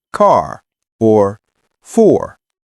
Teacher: American R is pronounced clearly at the end of words like car or for.